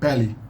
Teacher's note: the first e is pé, open, pé, but the final unstressed is always, the unstressed e is always reduced to i